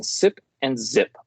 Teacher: Sip and zip are alveolar fricatives they are produced as hissing sounds because air escapes with difficulty